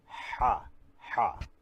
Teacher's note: should be pronounced from inner part of the throat pressing the end of the tongue